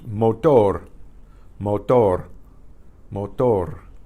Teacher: That R is kind of like it hits the tongue on the palate 2 or 3 times instead of rrr, multiple times.